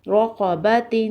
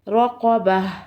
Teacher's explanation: وقف کی صورت میں تا کی آواز نہیں آئے گی، ہا کی آواز آئے گی۔